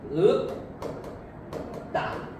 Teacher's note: 평파열음 뒤 경음화가 나타납니다.